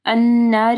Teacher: نون مشدد ہے، یہاں پہ غنہ ہوگا۔